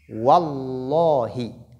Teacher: lorsque cette lettre porte fatha ou dhamma, la lettre de lam, c'est-à-dire la lettre lam de Allah, doit être lue avec emphase et bit tafkhim